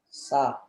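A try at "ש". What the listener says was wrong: Bukan sa, sha. Shin ini di sini. Jadi ini bunyi dia sha.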